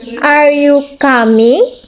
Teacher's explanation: rising intonation. Used for yes or no question and to show uncertainty